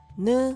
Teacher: made by touching the tongue tip to the gum Ridge